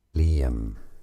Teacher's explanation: Let's break down the pronunciation. Liam, 2 syllables. Li, a stress on this Li syllable.